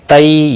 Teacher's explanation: تئی یا لین ہے، تھوڑا نرمی کے ساتھ کھینچ کر ادا کریں گے۔